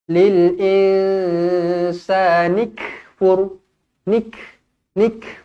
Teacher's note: huruf Kaf yang bertanda mati kita hamaskan dia kita baca berangin